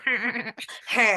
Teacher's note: You sound like the influencer vocal fry, when they're all nasally